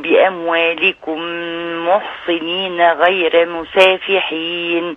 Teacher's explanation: انت رققت الرا صح كده